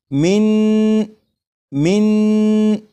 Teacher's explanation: मिन को 3 मरतबा मैं पढ़ूंगा, और पढ़ूंगा इस तरह कि नून की जब अदायगी होगी तो नून को पढ़ते हुए ज़बान तालु से लगे